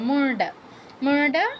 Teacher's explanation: মুণ্ড, মুণ্ড, মুন্ড বলবো না, মুন্ড বলে দন্তন্য ড হয়ে যাবে, মূর্ধন্য ড এর উচ্চারণ করতে হবে।